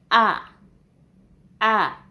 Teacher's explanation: the base of the tongue is pulled backwards to form the lower back vowel